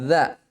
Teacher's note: Za bukan huruf qalqalah. Dia dibaca jahar. Ya, ini juga di antara huruf yang keluar di ujung lisan ya. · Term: huruf za